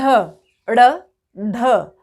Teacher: ड़ जा रही है हमारी जीवा मूर्धा से आगे जाकर, लेकिन वहीं से गोल होकर घूमकर नीचे आ जाती है, तो ये व्यंजन कहलाते हैं आपके उत्क्षिप्त व्यंजन।